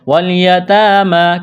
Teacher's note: والیتامى، کڑا زبر ہے، ایک الف کے برابر کھینچنا ہے